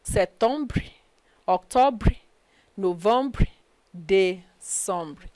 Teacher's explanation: But it does not apply on the last E. So you ignore the last E. But you pronounce the preceding consonant.